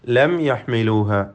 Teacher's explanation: സാക്കിന മീം ഇൽഹാർ ഷഫവി നൽകി മണിക്കാതെ വെളിവാക്കണം.